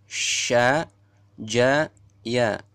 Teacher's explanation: keluar dari tengah-tengah lidah dan menepati langit-langit mulut atas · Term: kelompok syajariyah